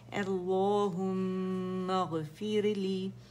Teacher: را ساکن سے پہلے ہمارے پاس کسرہ آ رہی ہے تو ہم نے را باریک پڑھنی ہے